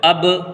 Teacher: حمزہ با زبر اب، تو دیکھیے جب ہم اب پڑھتے ہیں تو ہمارے ہونٹ چپکتے نہیں، بلکہ با کی ادائیگی کے فوراً بعد ہمارے ہونٹ الگ الگ ہو جاتے ہیں، اب، تو یہی قلقلہ کہلاتا ہے۔